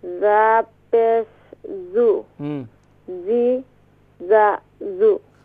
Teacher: اس کا مخرج ہے زبان کی نوک اور دونوں دانتوں کے اندرونی کنارے سے ادا ہوتا ہے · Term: Huruf Safiriya